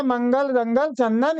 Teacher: इसकी ध्वनि जो है नाक से निकलती है, यानी कि नाक से अधिक सांस निकलती है, हवा निकलती है और मुख से कम। अनुस्वार में नाक से अधिक हवा निकलती है और मुख से कम